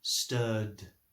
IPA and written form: stɜːd (stirred)